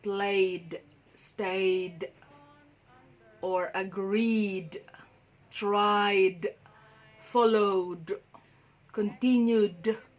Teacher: So it's the d sound, not id.